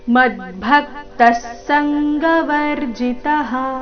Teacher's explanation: ಮದ್ಭಕ್ತ ಶಬ್ದದ ನಂತರ ವಿಸರ್ಗದ ಅರ್ಧಸ ಮುಂದಿನ ಶಬ್ದದಲ್ಲಿನ ಸಂಘ ಒಟ್ಟಿಗೆ ಹೇಳಬೇಕು